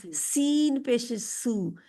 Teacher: सीन की आवाज सीटी वाली आती है।